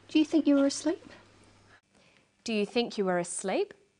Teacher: Her voice goes up at the end of the sentence. We call this a rising tone.